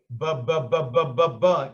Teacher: Huruf ba ini jenis huruf bilabial. Jenis huruf yang pengucapannya menggunakan dua bibir.